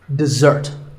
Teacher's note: the first syllable is d and the second starts with a z sound we stress the second syllable dessert this word refers to something